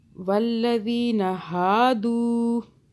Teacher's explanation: दू को खींचे, देखिए वाव साकिन है, उससे पहले दाल के ऊपर पेश है, तो ये मद्दा और यानी कि खींच रहे हैं, कैसे, दाल वाव पेश दू।